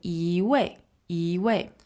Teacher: when it's followed by a fourth tone it becomes a second tone